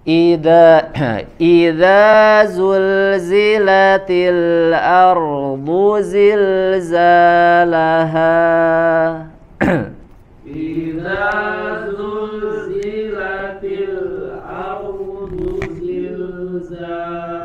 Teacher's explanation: Al-jauf dia akhir suaranya harus normal. Zilzalaha seperti kita menghabiskan nafas ya, tidak ada jeda ataupun ada tekanan seperti huruf hamzah.